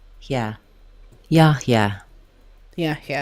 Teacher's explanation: Letters HY say he, very short and glided to the last a sound.